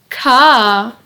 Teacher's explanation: the sound ka is unvoiced meaning your vocal chords don't vibrate when producing the sound your tongue also sits at the bottom of your mouth when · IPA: /k/